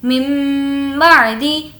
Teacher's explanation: یہاں پر غنہ بھی کریں گے یعنی کہ کچھ دیر ناک میں آواز کو روک لیں گے